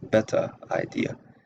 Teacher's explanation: the Southern accent is non-rhotic. So of course there is no linking R